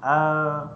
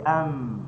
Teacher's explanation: kalau tak tutup bibir dia tak jadi huruf mim. Contoh kita baca huruf mim a tak jadilah.